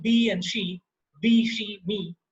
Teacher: They're all the sharp, shrill, front-oriented vowels.